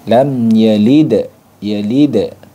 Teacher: makhrajnya itu di ujung lidah, ya, bertemu dengan gigi, bertemu dengan pangkal gigi seri atas · Sifatnya jahar. Jahar itu tertahan suaranya, ya, nafas tertahan, ya. Yang kedua syiddah, suara juga tertahan, ya. Jadi nafas dan suara tertahan, kemudian dia memiliki sifat qalqalah.